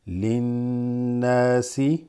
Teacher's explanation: you have a nasal sound here that has a slight vibration called غنة.